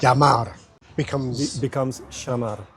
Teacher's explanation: One of the main distinctive features is pronouncing 'sh' for the 'y' or 'll' in spelling. Llamar becomes Becomes /ʃ/amar So here there absolutely is a 'sh' sound.